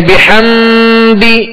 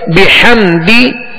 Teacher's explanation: بحمدی اس طرح پڑھیں گے اور اس میں غنہ بھی نہیں کریں گے